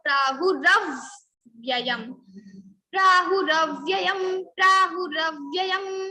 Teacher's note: We need to put stress on ra, because ra is followed by vya. Vya is sanyukta akshar or conjunct letter.